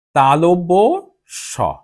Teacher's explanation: এটির নাম হচ্ছে তালব্য স, অর্থাৎ তালব্যতে, তালুতে জিভ অনেকটা স্পর্শ করে উচ্চারিত হয়